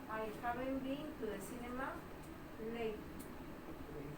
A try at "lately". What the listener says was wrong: Me está diciendo late. Es lately.